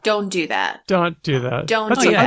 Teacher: when you have words like don't or can't, often American English speakers drop the T entirely